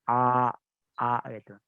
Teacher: Jadi itu patokan suara hamzah yang benar-benar keluar dari halki tenggorokan yang dimana tenggorokan ujung kita.